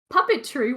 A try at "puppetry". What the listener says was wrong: we gotta emphasize the T in puppet because it sounds like you're saying puppy tree, and it's much less terrifying.